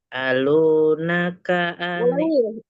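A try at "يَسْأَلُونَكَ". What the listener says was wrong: Ulangi yasnya nggak kedengeran. Alu aja langsung. Yes, alu.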